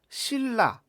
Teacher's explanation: 그런데 발음을 하게 되면 니은이 리을로 교체돼서 신라 이렇게 발음을 하게 되죠. 그러면 원래는 받침이 니은으로서 비음이었지만 뒤에 있는 리을과 좀 똑같아졌죠. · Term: 동화